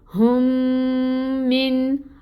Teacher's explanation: میم مشدد پہ غنہ ہوتا ہے 2 کاؤنٹس کے برابر